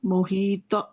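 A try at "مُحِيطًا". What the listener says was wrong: محیطہ نہیں ہوگا، محیطہ نہیں، تب ہوگا جب اس کے آگے الف کے اوپر جزم ہوگی، کیونکہ الف خالی ہے. تو الف خالی جب ہو جائے تو یہ مد لیٹر بن جاتا ہے، ہم نے کھینچنا ہے دو الف کے برابر،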